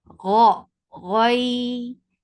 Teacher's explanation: It is opposite of itbaq, like your tongue should not be pasted on the palate, but it has infita, it has opening. Gha, ghai, and this ya is light. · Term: infitah